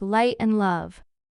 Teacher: First, we'll talk about the light L sound. This L is made with the tip of your tongue touching behind your upper front teeth. You'll hear this sound in words like light and love.